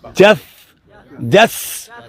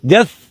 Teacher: یہ بیچ میں مجھے سین کی آواز آئی ہے. سین کی آواز میں سیٹی ہے